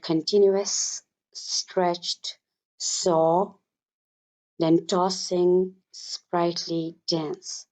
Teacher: It is a literary device characterized by the repetition of hissing sound, particularly the sound of s and sh sound in the poem. For instance, the poet uses this sound in the second stanza in the word continuous, stretched, saw, then tossing, sprightly dance. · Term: sibilance